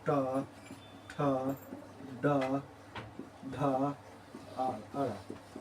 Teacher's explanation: ट वर्ग बोला जाता है मूर्धा से